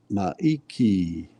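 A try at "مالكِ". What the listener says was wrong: Okay, so that's in the middle is a lam, huh?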